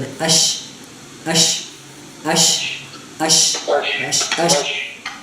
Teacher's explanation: अब जब जीम हम पढ़ते हैं तो जो जबान की नोक है वो ऊपर वाले ऊपर के तालु के साथ बिल्कुल लगती है। लेकिन जब शी और या जब हम पढ़ते हैं तो उस वक्त वो जुबान की नोक से ऊपर वाली जो तालु उसके साथ लगती नहीं है लेकिन बिलकुल उसके करीब हो जाती है।